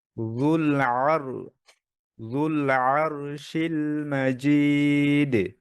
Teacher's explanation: র মোটা করেন ফাতহার পরে র সুকুন জবরের পরে র সুকুন র মোটা